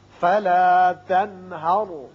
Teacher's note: یہاں نون ساکن کے بعد ہا ہے جو کہ حروف حلقی میں سے ہے، لہذا یہاں اظہار حلقی ہوگا. را پر پڑا جائے گا اس لیے کہ پہلے زبر ہے.